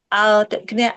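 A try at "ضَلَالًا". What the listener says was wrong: Al jangan nempel di gigi. Jangan di belakang gigi. Mundurin lagi coba.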